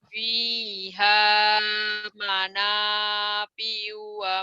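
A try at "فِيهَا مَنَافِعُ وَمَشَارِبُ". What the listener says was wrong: Ain, manafi'u. Tapi O-nya jangan berhenti di sini ya, sambungin. Sambungin, ayo. Bukan wa manafi'u ya, wa manafi'u ain.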